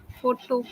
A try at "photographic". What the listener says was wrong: It's on the graph, right? It's on the third syllable, right? Photographic, right? It is photography, but the moment you add the IC suffix to it, the stress changes. The pattern shifts. Now the stress is on the third syllable graph. So in photographic, the ter cannot be aspirated.